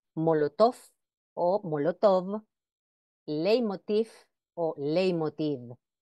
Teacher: lo normal es hacerlo con el sonido labiodental fricativo sordo como la f